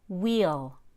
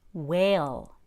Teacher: for long e the tip of the tongue is behind the crack between the top and bottom teeth for long a the tongue is lower the tip of the tongue will be under the bottom teeth